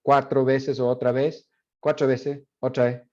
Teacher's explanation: Por ejemplo, el sonido tr, ch. So ch is a phoneme in Mapudungun, and it has become an allophone of tr in Chilean Spanish